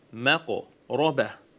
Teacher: We don't say makaraba. Notice we say maqraba. Qaf is a full mouth letter.